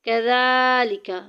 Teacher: زال کو ایک الف کے برابر لمبا کریں گے، اوپر کھڑی زبر آ گئی